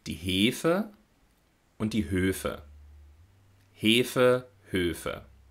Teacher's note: für den unterschiedlichen Klang ist also auf jeden Fall die lippenrundung mitverantwortlich aber ein Großteil dieser Arbeit übernimmt auch die Zunge ja das